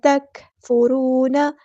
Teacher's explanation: کاف یہاں پہ باریک پڑھیں گے اور کاف کو ہلائیں گے نہیں، تک نہیں کرنا، تکفرون، کاف میں ہمزے کی صفت آئے گی۔